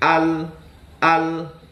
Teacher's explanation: Huruf lam bukanlah huruf qalqalah, teman-teman. Jadi ujung lidahnya tuh menempel, jangan langsung dipelintirkan, tapi ditahan dulu ke langit-langit.